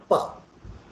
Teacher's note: first the flow of air gets totally stopped before the release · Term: stop sound